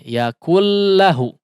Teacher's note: Yakun lahu, tidak bunyinya tidak yakun lahu, tapi yakul ya, langsung masuk ke huruf lam seolah ditasydidkan. Yakul lahu ya, tidak ada khaysyum di sini, tidak ada gunnah, sifat gunnah. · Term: Idgham kamil